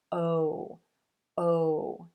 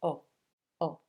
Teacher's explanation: To make this sound, you're going to round the lips out away from the teeth and let them fall back. This sound is longer and has more movement than you're used to. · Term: O as in rose